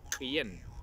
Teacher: La lengua no va ni hacia adelante ni hacia atrás, no sube, no baja, la lengua se mantiene al medio de la boca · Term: la sexta vocal